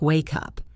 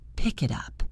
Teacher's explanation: In English, we do not stop between these words. We push the consonant onto the next word. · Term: linking